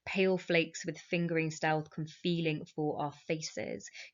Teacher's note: Pale flakes with fingering stealth con feeling for our faces. Get some beautiful fricative with the fff as if it's the sound of snowflakes falling onto the ground.